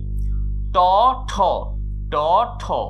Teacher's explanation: ট ঠ ট ঠ অঘোষ হবে ঠিক আছে কিন্তু ট অল্পপ্রাণ ঠ মহাপ্রাণ